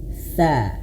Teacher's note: T itu udah tipis dan juga dia lidahnya dijulurkan ya. Tipis dan dijulurkan lidahnya dikeluarkan. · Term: huruf tsa